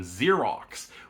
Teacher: Xerox which has two X's, one pronounced as zed and one pronounced as KX